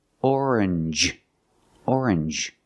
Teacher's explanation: NG G it makes the N sound like orange or exchange you make the n Sound not the nasal sound just n and the J like juice